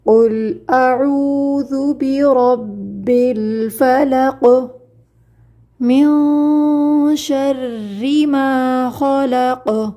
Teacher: ان دونوں آیات کے آخر میں ہم نے پڑھا تھا کہ قلقلہ کیا جائے گا، آواز پلٹ کر آئے گی